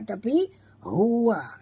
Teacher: ini ha simpul bunyinya dalam halqum